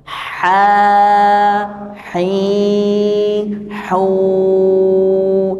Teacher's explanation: Jadi kalau ha itu tekannya pada tengah tenggorokan. Sama seperti huruf ain, tekannya pada tengah tenggorokan.